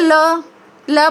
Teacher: ल बोलते समय हमारी जीभान मसूड़े को छुएगी, ठीक है, और आसपास से हवा निकलने का रास्ता रहेगा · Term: पार्श्विक